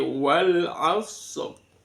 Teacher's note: harakat yang terakhir kalau diwaqaf itu diganti dengan sukun. Sama seperti ini.